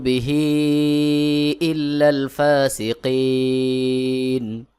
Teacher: জেরি নুন জবর না ফাসিকিনাল্লুবিহি ইল্লাল ফাসিকিন বিহি এক আলিফ টান পরের শব্দের শুরুতে আলিফে হামজাহ রয়েছে এখানে এক আলিফের জায়গায় তিন আলিফ টান দিতে হবে